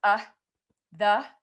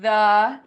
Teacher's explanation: it's the infamous schwa. That is the most common vowel sound in English.